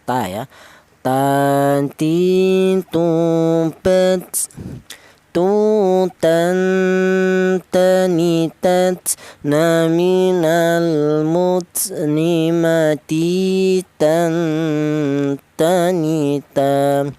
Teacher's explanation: Untuk huruf ta keluarnya huruf berasal dari ujung lidah menyentuh pangkal gigi seri atas